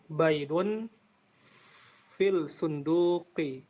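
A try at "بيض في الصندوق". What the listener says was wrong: Nah, ini bacanya baidun fis sunduki ya. Baidun fis sunduki. Jadi ini langsung masuk ke huruf shadnya.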